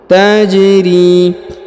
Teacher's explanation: huruf ja dipantulkan atau diqolqolahkan karena berharakat sukun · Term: dikolkolahkan